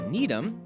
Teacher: with a town like, say, Needham, you have two pretty strong syllables. And pronouncing both strongly, like Needham, that is textbook stress clash.